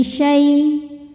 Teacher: sebab ada ya sukun yang sebelumnya berbaris fathah maka kita lembutkan atau kita lunakkan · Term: harfulin